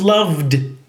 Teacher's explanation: the D endings that are made in the throat if you put your hand on your throat it vibrates and they're made by vocal cords